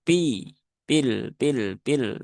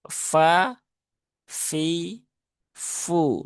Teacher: Jadi dia fa fi fu ya fi bukan pi tapi fi ada hamesnya ya fa ah ada hembusan udara yang e keluar ketika huruf itu diucapkan